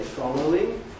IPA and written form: ˋfɒləʊɪŋ (following)